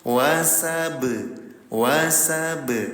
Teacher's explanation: Cara bacanya 0 harokat dipantulkan. Jadi bacanya mantul. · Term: qalqalah